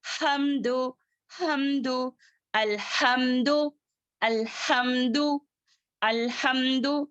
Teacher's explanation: ہاں وسط الحلق والا ہے، سانس اچھے سے جاری ہونا ہے